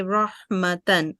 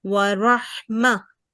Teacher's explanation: if we have to stop over a circular ta, then we can make it pronounce it as like mah, the ha sakin. And if you want to continue, you can say rahmatan.